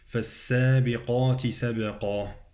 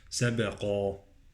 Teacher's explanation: فالسابقات سبقا، قاف مفخمة والقلقلة على الباء